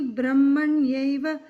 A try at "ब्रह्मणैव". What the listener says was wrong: You said Brahmanyeva, it's Brahmanaiva. Brahmanaiva. Brahmanaiva Mahatmana.